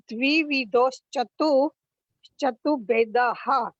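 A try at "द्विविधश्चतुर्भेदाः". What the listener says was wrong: बस चतुर्भेदा, चतुर्भेदा नहीं है, चतुर्भे के ऊपर एक र है की रेप है, तो द्विविधोश्च चतुर्भेदाः।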